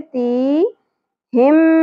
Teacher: میم مشدد غنہ ہوگا، ادغام مع الغنہ